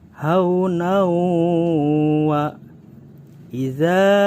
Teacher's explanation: how wa-idzaa di sini ada hukum hai idgham bighunnah hai karena tanwin bertemu dengan huruf wow yang dimana hukum idgham bighunnah harus didengung